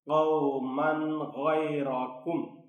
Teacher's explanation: تنوین کے بعد حروف حلقی میں سے چونکہ غین ہے اس لیے یہاں اظہار ہوگا